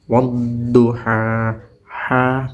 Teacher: ada fathah bertemu dengan alif kadar bacanya dipanjangkan satu Alif atau dua harakat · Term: Mad thobii